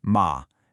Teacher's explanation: And a sharp falling pitch.